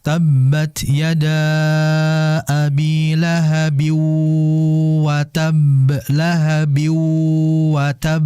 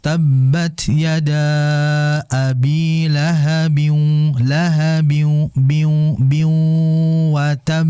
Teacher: Dan di sini masuk dalam kategori idgham bi gunnah, yaitu memasukkan huruf yang berikutnya, berarti ke huruf waw, bi gunnah, disertai dengan guna. Karena kesalahan di antara kita membaca idgham bi guna ini, khususnya waw, enggak ada gunanya.